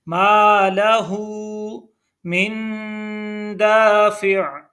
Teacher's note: मा लहू को हा के ऊपर उल्टा पेश है तो हा को थोड़ा सा खींचेंगे। · मिन के ऊपर गुन्ना है, नून साकिन है और नून साकिन के ऊपर गुन्ना होता है।